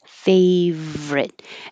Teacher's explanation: the word favorite looks like it should be three syllables, favorite, but we drop the middle and just make it two syllables. Favorite. And it is kind of weird to go from a V to an R.